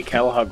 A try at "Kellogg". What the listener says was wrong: Did you say cow hug? But it sounded like you said Kel hug.